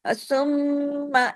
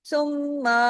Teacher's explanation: मीम के साथ आ की आवाज नहीं लगानी। इसलिए कि साथ अलीिफ़ नहीं है।